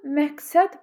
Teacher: Söz ortasında q-dan sonra kar gələndə k olur.